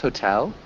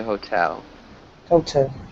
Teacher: it's just a long o sound so hotel watch that yeah just remember to emphasize the second syllable